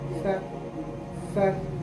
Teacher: یہاں جو سا ہے یہ سافٹ سا ہے اور اس میں سیٹی کی آواز نہیں آنا ہے